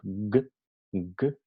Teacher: El fonema G se caracteriza como oclusivo velar sonoro. · vamos a notar que el postorso de la lengua toca en el velo del paladar, es velar. El punto de articulación está muy adentro de la boca.